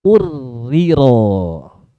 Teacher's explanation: Jadi ro pertama sudah hilang sama sekali, udah hilang. Udah masuk ke huruf ro yang kedua, yang dihukumi huruf yang kedua ro-nya berharokat kasroh. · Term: idghamnya kamil